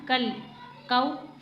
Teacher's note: लाम पे कलकला नहीं करना। कल नहीं पढ़ना।